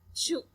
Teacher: la lengua hace contacto con la zona del paladar duro, donde se crea esa estrechez por donde el aire escapa, produciendo la fricción. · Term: alveopalatal africativa coronal sorda